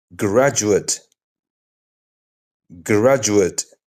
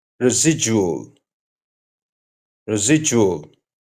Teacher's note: So what's happening when D meets certain vowel sounds? Especially you and I. It often softens into that gentle J sound. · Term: soft J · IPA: /dʒ/